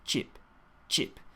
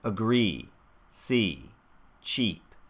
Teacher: for cheap, I'm hearing it become shortened into chip, chip. And I think this is because of that extra tension in the jaw here.